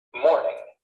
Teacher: Morning has stress on the first syllable.